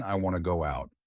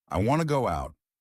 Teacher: Instead of want to, I said wanna. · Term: connected speech